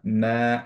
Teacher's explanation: মা, obviously মাদ তবি, because হচ্ছে আলিফ খানজেরি আছে। বা আলিফ সাগিরা, এর জন্য আমরা মা একটু টান দিব